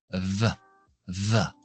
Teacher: La V es labio dental, no cerramos dientes de arriba en el labio de abajo.